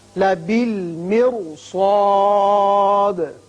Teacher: اس لیے کہ سواد حروف مستعاریہ میں سے ہے اور حروف مستعاریہ موٹے پڑے جاتے ہیں، اس لیے را بھی موٹا پڑا جائے گا